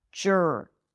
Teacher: Always think of it as if it's just an R sound, okay? The R after a schwa takes over the schwa sound, okay? So there isn't really a vowel there.